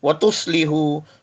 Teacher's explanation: سواد whistling sound ہے، حرف صفیریہ، زبان کی نوک اور دونوں دانتوں کے اندرونی کناروں سے پڑھیے